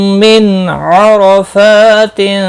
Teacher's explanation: نون ساکن کے بعد حلقی عین آیا ہے، اظہار حلقی ہوگا اور زبر کی وجہ سے پر پڑھا جائے گا۔